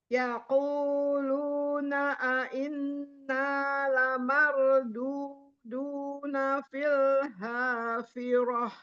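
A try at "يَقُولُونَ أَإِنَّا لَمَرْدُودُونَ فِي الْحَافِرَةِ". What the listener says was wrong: Bukan filha. Filha. Ha tengah. Tenggorokan tengah. Lamarduduna fil hafirah.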